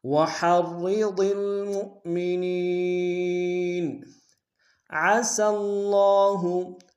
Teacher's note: عسى اللہ میں عین کو گہرائی سے ادا کریں گے